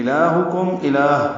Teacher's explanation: لام کو 2 حرکات لمبا کریں گے، ہا سے حلق سے نکالیں گے، کاف باریک ہے، میم ساکن پہ اظہار شفوی ہے، پھر الہ ہے، اب ہا پر تنوین ہے جس کی وجہ سے آگے وہ آنے کی وجہ سے ادغام ہوگا۔